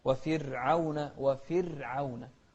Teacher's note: وفرعون، هذه كلمة فرعون في أي مكان في القرآن نرقق الراء هني، لأن الراء هني ساكنة قبلها مكسور